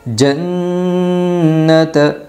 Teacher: نون کو 1 الف کی مقدار غنہ کے ساتھ ناک میں چبا کر پڑھے گی۔